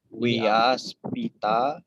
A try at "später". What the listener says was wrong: Enggak, huruf A umlaut jadi E.